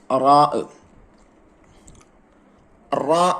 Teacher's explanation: നാവിന്റെ തലയുടെ മുതുകും മേലെ മുൻപല്ലിന്റെ ഊനും. റാ, റാ എന്നാണ് ഉച്ചരിക്കേണ്ടത്.